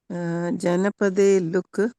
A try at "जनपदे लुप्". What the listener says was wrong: लुप प प। माँ, लुप प। प है पीछे, प।